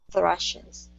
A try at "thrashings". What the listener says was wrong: Okay, one more time. Watch that THR. Thrashings.